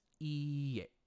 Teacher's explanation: And again, notice it is iie. So there's two e's, e elongated, and then e, iie. And you might notice this is creating a ye sound as you're saying it, iie, but there is no ye in the Japanese language.